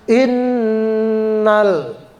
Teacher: Innal, lam sukun nggak boleh dibaca qalqalah.